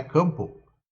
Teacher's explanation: Mas eu uso passo. Mas campo, a gente não diz o O, a gente parece que fala o U